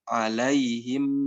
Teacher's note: Kalau mim biasanya kita baca alaihim ditutup, alaihim ditutup sempurna. Nah, ketika ikhfa ini, bibir kita tidak ditutup sempurna.